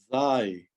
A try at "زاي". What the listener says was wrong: Z, z. Zai. Yeah, so we don't really want too much emphasis. I was only going z, so you can hear the sound.